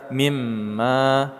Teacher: mim bertasydid kita baca secara gunnah atau dengung. Kita tahan satu atau satu setengah alif